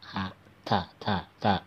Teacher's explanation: sifat alhamas ada udara yang keluar ya, terasa ada udara yang keluar